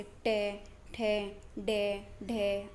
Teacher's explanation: फिर मूर्धन्य मतलब कठोर तालु के अगले भाग से